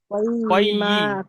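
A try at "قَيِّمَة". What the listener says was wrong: কয়্যি মাহ। ইয়া টান হবে না। কয়্যি মাহ।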